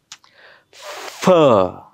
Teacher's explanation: खालचा ओठ वरच्या दाताला चिकटवायचा आणि हवा फुफ्फुसातून बाहेर सोडत असताना घासून जाईल याची काळजी घ्यायची.